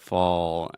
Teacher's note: it's not totally like fo but you have fall and then that dark l sound